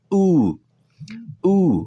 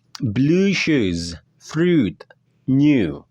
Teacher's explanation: suara U ini ya, seperti halnya suara U dalam bahasa Indonesia. Hanya saja dipanjangkan sedikit gitu. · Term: suara U yang panjang